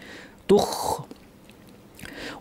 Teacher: খ ভারী এবং খয়ের একটা ড্রাই আওয়াজ থাকবে, বাতাসও জারি থাকবে। চেষ্টা করব বেশি খড়খড়ে আওয়াজ যেন না হয়, অথবা ভেজা আওয়াজ যেন না হয়, শুকনা আওয়াজ হয়।